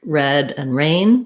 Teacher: And when it comes to the sound, we have R in American English is always going to have a tight American R. We have R at the start of words like red and rain, where we just start right in from that R position and move into the vowel.